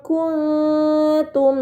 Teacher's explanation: nun sukun dibaca secara samar dengan gunnah yang dipanjangkan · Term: ikhfa hakiki